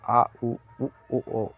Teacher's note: पश्च में आपका जीभ के पिछले हिस्से से उच्चारित होते हैं